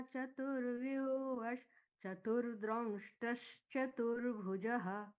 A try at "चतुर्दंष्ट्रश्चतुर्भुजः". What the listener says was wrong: चतुर्दंष्ट्रश द्र नहीं है, अब यहाँ पर द्र नहीं बचता है ना। चतुर रेफ तो हो गया, तू के साथ में जुड़ गया, फिर से रेफ नहीं आएगा। चतुर्दंष्ट्रश दंष्ट्र दं दवा दं दंष्ट्रश नहीं, दंष्ट्र, एक बार सिर्फ दंष्ट्र बोलिए, दंष्ट्र